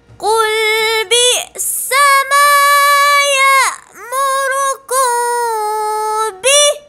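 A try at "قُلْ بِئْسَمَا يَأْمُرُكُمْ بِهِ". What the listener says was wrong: Dia ada sendi dia tu. Ha, dia tak boleh terus bi. Ha, dia gitu.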